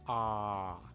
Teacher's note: your mouth is opening pretty wide and you can feel that your tongue is pretty low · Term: japanese sound